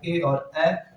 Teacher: ए और ए जो कि कंठ और ताल दो उच्चारण अंगों की सहायता से उच्चरित होता है